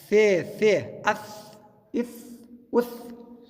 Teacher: د ژبې سر د غاښو سرو ته راځي په ثا کې